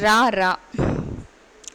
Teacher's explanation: நாவின் நுனி மேல் அன்னத்தின் முதல் பகுதியை தொட்டு வருவதால் ரகரம் தோன்றுகிறது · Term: இடையின ரகரம்